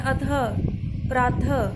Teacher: उच्चारण करते समय हल्के ह की ध्वनि निकलती है, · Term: विसर्ग